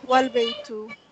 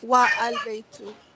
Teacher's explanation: if it is preceded by wa, meaning and, the alif is dropped and the phrase is pronounced wal-baytu, not wa-al-baytu